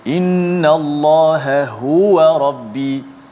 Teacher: huruf ha, ha simpul, yang berada di pangkal halqum